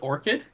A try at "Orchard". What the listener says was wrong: Orchard. Orchard. It's ARD.